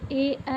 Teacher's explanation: कंठ प्लस तालू क्या होता है कंठ तालव्य होता है तो ए में कंठ तालव्य से बोलते हैं